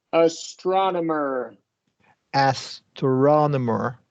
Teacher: it is going to be a wide a and Then followed by a short o that and this one's going to get the primary stress astronomer